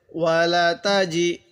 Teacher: এই জিমটা একটু শক্ত করে পড়বো, কারণ অনেকে আমরা জিমটা একটু নরম করে পড়ি, তখন সেটা দাল উচ্চারণ হয়ে যায়, তখন সহি উচ্চারণ হয় না।